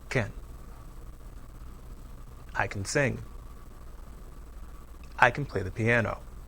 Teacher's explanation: when can is unstressed the vowel is reduced to the short weak vowel uh